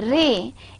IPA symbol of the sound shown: ɹ